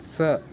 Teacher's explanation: जब दंत मूल से हम स्पर्श करते हैं तो स ऐसा निकलता है